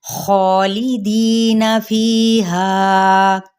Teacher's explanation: تطبیق: خالدین، خا پہ مد سلیب الالف کا قائم مقام ہے جس کو ایک الف یا دو حرکات کے برابر کھینچا جائے گا، اور ساتھ ہی خا حروف مستعلیہ میں سے ایک حرف ہے جس کو ہر کنڈیشن میں پر ہی پڑھا جاتا ہے، یعنی موٹا کر کے